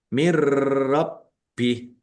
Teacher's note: Jadi masuk ke huruf ra nunnya tidak dibaca langsung masuk ke huruf ra tetapi tidak mendengung. Mirrabbi baknya dibaca double ada tasdidnya. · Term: idgham bila gunnah